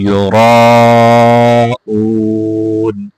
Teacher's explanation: را کو موٹا کر کے پڑھنا ہے، اس کے ساتھ مد ہے، مد کو بھی پورا کر کے پڑھنا ہے، یراءون وَيَمْنَعُونَ الْمَاعُونَ۔